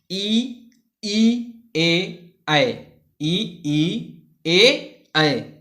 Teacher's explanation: इनके उच्चारण में जीभ के अग्र भाग का प्रयोग किया जाता है, इसलिए इन्हें अग्र स्वर कहते हैं और इनकी संख्या 4 होती है।